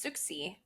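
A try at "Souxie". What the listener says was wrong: I feel like it's more like a sh sound like Su Sushi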